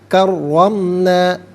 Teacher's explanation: را پر زبر ہے، را کو پر کر کے پڑھا جائے گا اور را مشدد ہے، جماؤ کے ساتھ پڑھیں گے